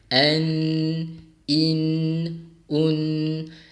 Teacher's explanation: Apabila jelas, nun mati kita baca dengan makhraj yang tepat, di mana hujung lidah kita letakkan di mana? Di langit belah hadapan. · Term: izhar